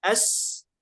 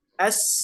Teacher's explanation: kita pertemukan antara dua organ kita, yaitu antara ujung lidah, yaitu bertemu dengan pangkal gigi bawah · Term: huruf sin